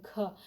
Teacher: घ जो है ग जो है घोष है, अल्प प्राण है। घ जो है घ तो महाप्राण है, अच्छी खासी वायु जो है बाहर निकलती है और क्या है घोष है घ, ठीक है।